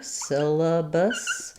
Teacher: letter A is going to be unstressed, so it'll be a schwa here